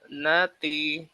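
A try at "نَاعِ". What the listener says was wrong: Kurang pecah suara ainnya. Nati.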